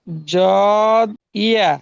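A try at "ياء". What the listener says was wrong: ইয়া শব্দের টান দেন।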